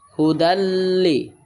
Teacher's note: তে দালটা লামের সাথে মিলিয়ে পড়বেন, গুন্না সারা পড়বেন। দাল লাম দুই জবর দাল, এখানে দাল দুই জবর দান হওয়ার কথা ছিল, কিন্তু দাল গিয়া লামের সাথে মিশবে। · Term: ইদগামে বেলা গুন্না